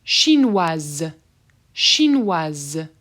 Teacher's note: i'm going to say that s as a z sound